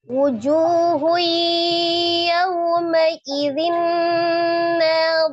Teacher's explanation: Nun sukun atau tanwin bertemu dengan huruf ya itu hukumnya adalah idgham bighunna. Diidghamkan ke huruf ya